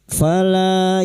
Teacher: fala lam alif dua harakat kita panjangkan mad thabi'i